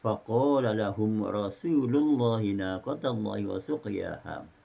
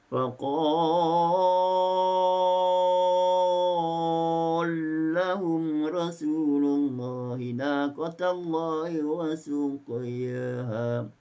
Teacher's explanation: Jadi dari faqala lahum kepada faqallahum, diidghamkan lam ke dalam. 4 harakat faqallahum, 2 harakat faqallahum. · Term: idgham kabir